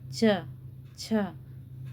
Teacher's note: घर्षण हो रहा है जीभ का ऊपर वाले तालु से। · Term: स्पर्श संघर्षी